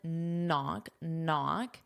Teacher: Notice that K is silent.